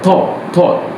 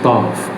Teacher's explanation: The British speaker used lip rounding and higher tongue position.